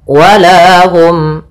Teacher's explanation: Hum itu ada izhar syafawi, itu dibaca dengan jelas suara mimnya